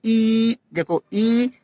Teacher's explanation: मुंह छोटा सा खुल रहा है और बहुत सकरा हो जाता है और लेकिन कहीं पर छू नहीं रहा है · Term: समृद्ध स्वर